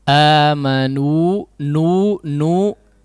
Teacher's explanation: Si gunnahnya hanya ketika menempelkan lidah ke pangkal gigi seri, ya, atau di gusi gigi seri, ya. Nu ketika madnya ketika mengucapkan madnya maka si gunnahnya sudah hilang, ya. Nu, jangan nu, ya, jangan diteruskan gunnahnya.